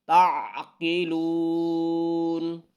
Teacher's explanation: کتاب، افلا تعقلون، افلا تعقلون، تعقلون کو عین جو ہے عین وہ عین حلق سے نکالنا ہے، عین کی آواز آنی چاہیے